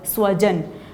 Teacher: स्व में स दंत्य है, दांत के पीछे जिह्वा को लगाकर स बोला गया